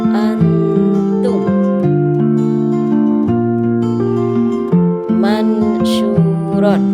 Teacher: Cara membacanya yaitu dengan cara dibaca samar dengan dengung atau gunnah. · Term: ikhfa